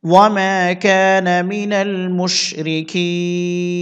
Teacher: অকফের সময় নুন সাকিন হবে আর এখানে টানতে হবে তিন আলিফ